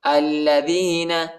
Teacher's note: حمزہ کو لام کے ساتھ ملائیں گے، لام پر جو ہے شد آیا ہے، لام کو سختی کے ساتھ شدت کے ساتھ پڑھیں گے